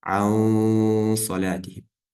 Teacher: удлинение нун бывает полнозвучным из-за того, что за ним идет твердая буква صاد